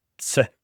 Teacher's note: it's a consonant cluster, ts, and then with the e at the end, with the high tone, tse. But in other parts of the Navajo tribe, maybe further down south, on the other side of the mountains here and there, they may pronounce it differently.